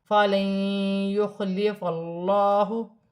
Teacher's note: اللہ کی لام سے پہلے زبر ہے، اللہ کی لام موٹی پڑھی جائے گی